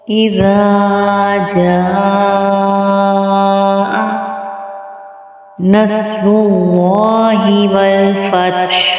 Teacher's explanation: جاء یہاں پہ ہم نے مد کی وجہ سے اس کو کھینچا ہے 4 سے 5 الف کی مقدار کے برابر